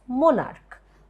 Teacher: the first important word is Monarch where the stress is on m o n